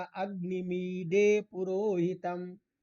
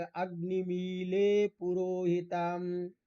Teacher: डलयोर अभेद, डकार और लकार का अभेद प्रयोग होता है